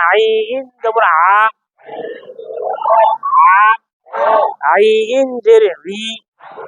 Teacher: আইন হলকের মধ্য থেকে গলা চিপে বলেন